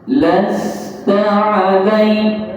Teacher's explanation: Las, dia huruf sin mesti berkekalan sifatnya. Dia bukan meletus, tapi dia berdesir. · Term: sifat safir